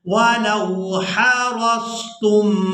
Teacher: रा को स्वाद साकिन के साथ मिलाएंगे